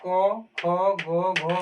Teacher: तो क का जो उच्चारण होता है कंठ से ख का भी उच्चारण होता है कंठ से